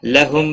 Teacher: میم ساکن اظہار ہوگا، اس اظہار کو اظہار شفی کہتے ہیں